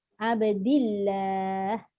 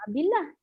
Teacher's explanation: Maknanya dal baris bawah, mesti Allah itu dibaca nipis.